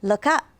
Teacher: look up it actually ends up sounding almost like this sound the K belongs with up sort of like L cup is how the linking sounds when